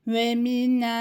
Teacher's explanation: Nun harfinden sonra bakın uzatma harflerinde elif gelmiş. Nun harfi bir elif miktarı uzatılır.